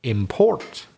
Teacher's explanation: import is stressed on the second syllable